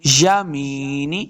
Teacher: وَأَصْحَابُ الْيَمِينِ یمین میم سے نون زیر نی نون کو لمبا نہیں کریں گے. میم زے یہ یا مد ہے اس کو 2 حرکات لمبا کرنا ہے.